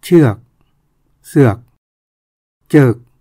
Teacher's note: ตัวชก็ออกเสียงเป็นจ